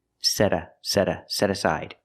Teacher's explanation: you hear the T changed to a fast D